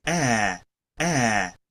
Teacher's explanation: el black cat, que es el sonido que es una mezcla entre A y E.